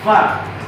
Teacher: memiliki makhraj gigi atas bertemu dengan bibir bawah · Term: huruf FA